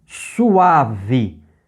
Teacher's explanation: você junta o U com o A, e aí fica, em vez de três sílabas, ficam duas sílabas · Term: sinérese